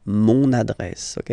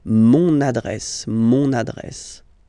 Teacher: you can hear now this little link, so you get to pronounce this N